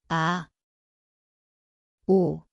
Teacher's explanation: Koht on kurk. Vaikne algus.